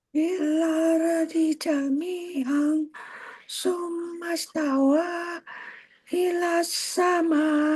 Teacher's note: Tawa sama-sama, panjangnya sama, 2 ayunan.